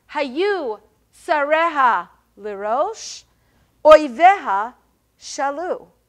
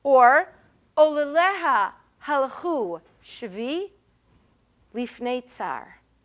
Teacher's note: The meter of lamentation, which he defined as appearing fairly consistently in a manner in which the second sentence is shorter than the first sentence. So you might have three stressed syllables in the first part of the sentence and two, or perhaps even one, in the second part of the sentence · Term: kina meter